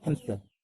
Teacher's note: when we pronounce the word hamster at a regular speed, most of us will say hamster with P. That is what we call as an insertion.